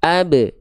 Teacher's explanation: Dalam kondisi sukun dia punya sifat namanya qalqalah.